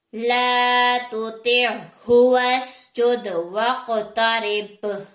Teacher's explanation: قاف حروف مصالیہ میں سے ہے تو موٹا پڑا جائے گا